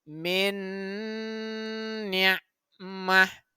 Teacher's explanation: Maka nun itu dilebur dan dimasukkan ke dalam bunyi huruf nun selanjutnya. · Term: idgham bigunnah